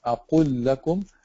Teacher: So you have أَقُلْ لَكُمْ, because they are followed by a lam. You have to merge them together, and then you have to put a shadda on the following lam.